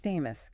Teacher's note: Two parts. F-A-Y mus. Stress on the first part.